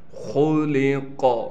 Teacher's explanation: خا کو موٹے پڑھنے کے ساتھ لام کو بھی باریک پڑھنا ہے۔ قاف بھی موٹا پڑھا جائے گا اور قاف پر ہم وقف کی حالت میں قلقلہ کریں گے